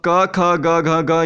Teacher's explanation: क, ख, ग, घ, ग ये कंठ में आता है।